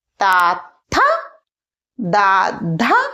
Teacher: మనం ఈ లెటర్స్ ని పలికేటప్పుడు పండ్లకు వెనక భాగంలో మన నాలుక టచ్ చేస్తుందన్నమాట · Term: దంత్